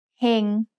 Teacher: hang has a low class consonant with a live syllable ending so it's midtone